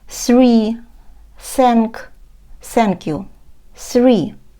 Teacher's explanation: кінчик язика між зубів і вимовляємо начебто звук с але заважаємо собі говорити цей звук чистим с